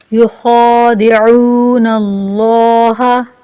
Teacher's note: خا کو موٹا پڑھیں گے اور لفظ اللہ کو بھی۔